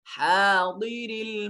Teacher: हा इसको हलक से अदा करेंगे।